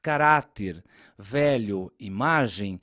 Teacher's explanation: Já no caso das palavras caráter, velho, imagem, a sílaba tônica é a penúltima. Por essa razão, elas são classificadas como paroxítonas.